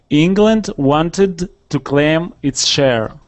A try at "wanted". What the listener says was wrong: All right, almost. Let's add that D in there instead of the T. England wanted to claim its share. It's hard to switch from that T over to that D. So try practicing with that, and then also try listening when we change that T sound to a D.